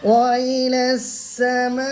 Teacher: হারফে মাদ্দার পরে হামজা একই শব্দের মধ্যে আছে, অর্থাৎ একই কলমার মধ্যে আছে, এই জন্য মাদ্দে মুত্তাসিল হবে, আর মাদ্দে মুত্তাসিলকে 4 আলিফ টান দিয়ে পড়তে হবে